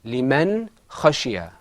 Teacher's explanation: you heard the noon sound, fully articulated, and then after that there was the kha sound.